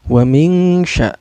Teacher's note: Cara bacanya ikhfa ini samar sambil dengung ya.